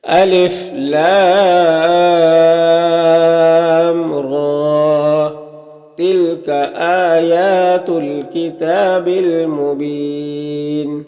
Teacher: یہاں پر لام کو زیادہ کھینچیں گے کیونکہ لام میں جو مد ہے یہ مد لازم ہے، اس کو 3 سے 4 الف کے برابر کھینچ کر پڑھتے ہیں، اور را میں کھڑا زبر ہے تو اسے 1 الف کے برابر کھینچیں گے۔